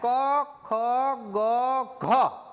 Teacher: આ કંઠ્ય એટલે કંઠની અંદરથી બોલાતા હોય